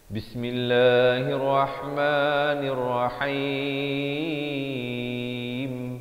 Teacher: Dan di akhir baru masuk ke dalam mim, disempurnakan dan dirapatkan mulut. Jangan awal.